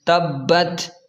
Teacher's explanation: با پر تشدید ہے تو اسے تھوڑا سا سختی سے ادا کریں، تبت، اس طرح۔